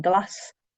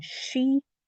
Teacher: S with a broad vowel is S, like in glass. With a slender vowel is a sh, like in she.